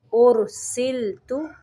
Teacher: را کو موٹا پڑھیں گے اور لام کو باریک پڑھیں گے